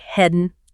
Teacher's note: Yeah, so in that very natural phrase, a few things happen. Heading often loses its G sound at the end, becomes more like headin'.